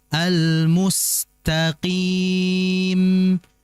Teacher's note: jangan sampai ditebalkan huruf sinnya